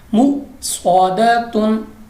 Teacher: हमारे पास हमजा साकिन है और उसके बाद स्वाद है मुस्तालिया का, झटका दिया है और उसके बाद पुर पड़ा है, मोटा पड़ा है